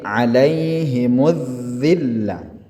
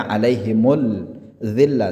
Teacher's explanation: Huruf setelahnya adalah huruf dzal dan dzalnya bertasydid. Maka huruf alif lam ta'rifnya ini dihilangkan, yang dibaca yang dinyatakan adalah huruf dzalnya. Maka ini disebut dengan asy-syamsiyah.